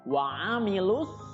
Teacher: lu juga tidak dibaca panjang karena bertemu dengan alif lam syamsiyah atau alif lam yang bertemu dengan huruf sod.